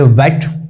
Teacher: वेट का जो व है वो पूरा रहता है डब्ल्यू वाला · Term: पूरा व